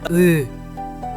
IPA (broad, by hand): ɯ